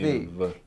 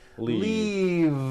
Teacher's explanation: Keep the voicing going throughout the whole word and voice the V. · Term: voiced V